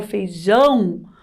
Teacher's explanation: quando eu falo feijão o som do ão daquela potência né um som forte ão é a sílaba tônica